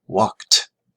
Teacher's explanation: The final sound of the verb is k. K is unvoiced, so ed sounds like t